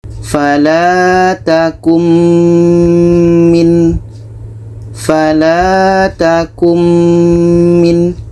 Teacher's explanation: Ini nun mati bertemu mim, idgham bi gunnah. Maka bunyi nun ini kita masukkan kepada bunyi mim.